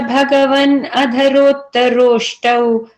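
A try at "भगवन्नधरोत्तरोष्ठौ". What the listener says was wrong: And so, Andaratla Bhagavan Adhar, you don't have to say that, break it that way. Just put the double na there, in and a na. So Bhagavan Adhar, Bhagavan. Yeah, because the in and a becomes two nas there.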